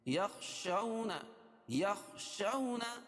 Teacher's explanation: خا کو موٹا پڑھیں گے حروف مستعلیہ میں سے